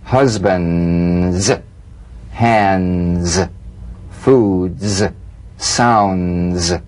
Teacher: press the tongue against the upper gum Ridge for the D drum beat and peel the tip down a bit as the Z vibrates just before the tongue Springs away use a light staccato treatment · use a light staccato treatment without sustaining the [Music] Z so feel the resonant staccato Z in these words husbands hands